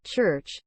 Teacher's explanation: begins as a plosive like a p or t sound but is immediately followed by a fricative · sound the transition from plosive to fricative creates a unique sound typically described as a short sharp burst of noise followed by a longer continuous hissing or buzzing sound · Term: affricate